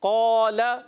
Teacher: अब हमने पढ़ा कौल तो इसका अलिफ मोटा हो गया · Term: पुर